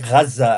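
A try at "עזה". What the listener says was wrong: It's Azza, Just to correct you, it's pronounced Azza. Gaza is the Arabic inversion. It's Azza with an ayn.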